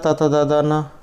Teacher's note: ये दंत से बोला जाता है